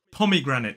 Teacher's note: four syllables the main stress falls on the first syllable and there is a lesser stress on the third syllable so it is pomegranate so it's p o pom then I